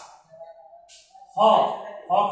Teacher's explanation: হ কিন্তু ঘোষ মহাপ্রাণ ধ্বনি